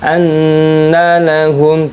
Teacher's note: dibaca gunnah karena ada nun tasydid